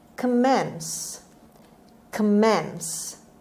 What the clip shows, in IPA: kəˈmens